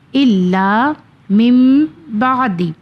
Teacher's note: نون ساکن کے بعد اگر حرف با آ جائے تو اقلاب کا قانون آ جاتا ہے، تو یہاں پہ میم کی ادائیگی ہوگی، نون ہٹ جائے گا